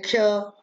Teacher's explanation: इन क और श दोनों के मिलने से ये क्ष बना है और इसलिए ये संयुक्त व्यंजन है। इसका उच्चारण भी क और श दोनों मिलके होता है